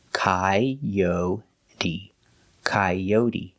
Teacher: And the T is pronounced with a D sound, d, coyote. And the E is pronounced with a long E, like green beans